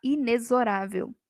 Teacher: o X aqui tem som de Z